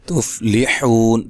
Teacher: تا کو باریک، حو و مدہ ہے، وقف کی صورت میں مد کر سکتے ہیں